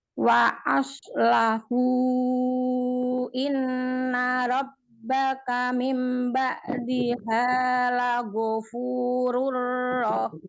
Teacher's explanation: Aslah hunya panjangnya empat atau lima harakat. Ada mad jaiz munfasil.